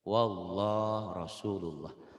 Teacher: Sebelum lafaz Allah, barisnya di atas. Itu dibacanya tebal.